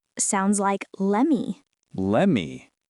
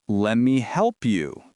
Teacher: Yes, sometimes the T sound is dropped completely.